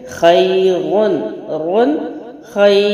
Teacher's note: یا لین کے بعد والا حرف اگر ساکن ہو تو حروف لین کو 3 الف کے برابر لمبا کرتے ہیں